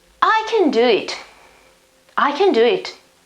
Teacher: The accent is before, it's not on the modal verb. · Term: stress